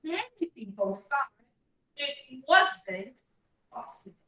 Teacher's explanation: it goes up then down on the last word